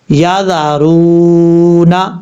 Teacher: واو ساکن سے پہلے پیش ہے، وہ مدہ ہے، ایک الف کی مقدار لمبا کر کے اس کو پڑھیں گے.